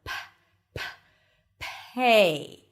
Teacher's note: So it feels like you have a little H right after. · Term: aspirated